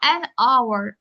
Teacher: O bax burda h-nı tələffüz eləmədik. Saitlə başladı.